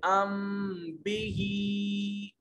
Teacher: میم ساکن کے بعد اگر با آ جائے تو اس وقت اخفاء مع الغنہ کریں گے، یعنی دونوں ہونٹوں کو ملا کر آواز ناک میں لے جائیں گے، اسے اخفاء شفوی کہتے ہیں۔